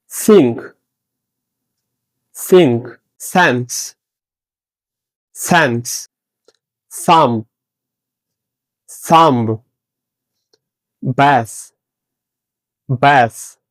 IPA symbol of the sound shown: θ